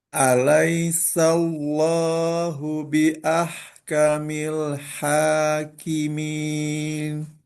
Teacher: di sini hati-hati jangan solo, sallo. Tetap sinnya tipis. Alaisallo, sallo.